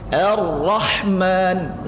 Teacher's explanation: Ar-rah, bukan ar-rah, ya, bukan ar, ya, Ar-Rahman. Ketika masuk ke saddah ra-nya itu, ke tasdid ra-nya itu langsung tebalkan bunyinya. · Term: tafkhim